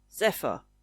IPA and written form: 'zɛfə (Zephyr)